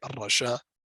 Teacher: So you would not even pronounce the Hamza at all, not as a slight sound that you would have as if there's a sukun there or not. You will just treat it as the Hamza is not there at all.